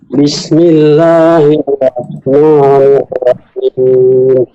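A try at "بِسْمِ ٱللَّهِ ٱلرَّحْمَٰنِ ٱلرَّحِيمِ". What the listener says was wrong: Nah, huruf ro-nya ditekan, Pak. Bismillahirrahmanirrahim. Ada tasydidnya ditekan.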